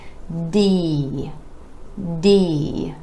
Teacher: that sound a little longer give it a little stretch and start first with the tongue up behind the teeth to the alveolar Ridge for the D sound